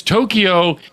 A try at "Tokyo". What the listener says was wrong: No E in the middle.